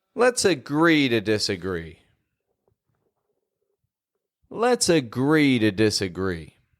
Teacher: the word agree is getting stressed there again the most important verb the most important action in this phrase agree let's agree we're